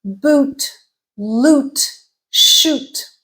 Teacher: so high tongue height but in the back is the oh sound lips are rounded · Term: high back vowel, high back vowels